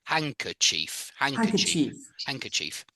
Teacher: and you don't really pronounce the d in h in handkerchief I don't hear a d when I say it